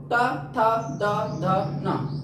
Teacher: हम बोलते हैं तो हमारी जो जीभ है वो दांतों से टच करती है।